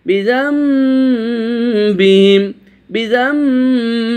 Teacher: নুন সাকিনের পরে বা এসেছে, ইকলাব পরিবর্তন করে দিয়েছি নুন সাকিনের উচ্চারণটিকে মিম দিয়ে।